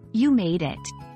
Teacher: phenetic transcriptions remember that in English intonation can change the meaning for you made it the stress typically falls on the word made it's often said with a rising intonation at the end especially